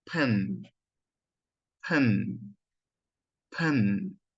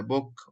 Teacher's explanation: هتلاحظ انه كميه من الهواء كده طالعه من بقك بتخبط في ايدك كده، لانه الصوت ده صوت انفجاري